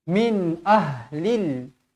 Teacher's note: nun bertanda sukun bertemu huruf hamzah izhar halqi